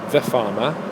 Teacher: So when you say farmer, you can say the farmer, and then you're getting 2 schwas in one block of speech